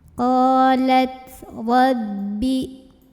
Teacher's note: Ra dibunyikan secara tafkhim karena ra-nya berbaris fathah. Jadi ini bunyinya tebal, pangkal lidah kita diangkat.